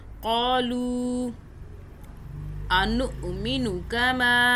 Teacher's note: اس حمزہ پہ ہم جھٹکا دے رہے ہیں، حمزہ پہ جھٹکا ہوتا ہے، حمزہ ساکن، اس کے اوپر جزم ہے نا، تو اس لیے یہاں پہ حمزہ پہ ہم جھٹکا دیں گے۔